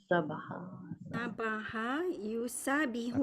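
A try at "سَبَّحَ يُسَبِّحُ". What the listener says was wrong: Okey, sabdu, come on. Kalau tak ada sabdu, kalau sabah yasbahu tu jadi berenang.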